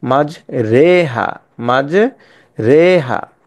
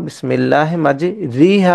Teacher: যে রয় নিচে জের আছে এই জের উচ্চারণটা জবর এবং জের জবর এবং জেরের মধ্যবর্তী স্থানে উচ্চারণ হবে রে